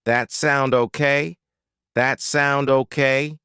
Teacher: that's what I want but I want to know your opinion does that sound okay reduces to that sound okay